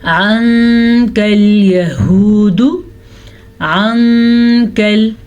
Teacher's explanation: عنکل یہود عنکل نون ساکن کے بعد کاف حروف اخوا میں سے ہے تو نون ساکن کی آواز اخوا کے ساتھ چھپے ہوئے غنے کے ساتھ پڑھی جائے گی